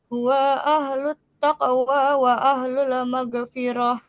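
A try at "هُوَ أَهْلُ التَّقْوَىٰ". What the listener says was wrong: Wa ahlut taqwa, huwanya pendek. Huwa ahlut taqwa.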